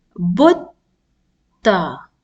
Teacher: I'm pausing and then I'm pronouncing ta, the same letter with fatha. So that means ta has a shadda. Ta is being pronounced twice.